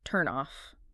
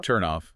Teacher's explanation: that final consonant sound often just links across. It attaches to the vowel, creates a really seamless transition.